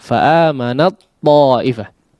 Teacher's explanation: tidak disukunkan terlebih dahulu ya, tapi diidghamkan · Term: idgham kamil